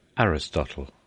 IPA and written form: ˈærɪstɒtəl (Aristotle)